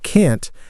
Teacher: British, can't, has an ah sound like can't, very distinct from can.